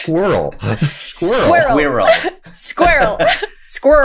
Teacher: There is a whole schwa in there.